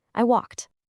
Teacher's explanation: if the verb is just sitting there at the end of the sentence, you say a very light soft t sound.